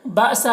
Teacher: حمزہ ساکنہ ہے تو جھٹکا لگے گا